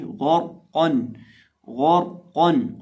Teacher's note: اگر را ساکن سے پہلے زیر ہو تو اس کو باریک پڑھا جاتا ہے۔ اب یہاں را ساکن سے پہلے کیا ہے؟ زبر ہے، تو را ساکن کو موٹا پڑھیں گے